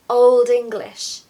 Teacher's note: We're blending D to E there.